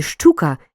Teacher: Поглянь, у слові щука є чотири букви, але п'ять звуків. Адже ща передаємо двома шиплячими: ш і ч.